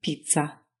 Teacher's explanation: Both articulated in the exact same spot without any big puff of air like we use in English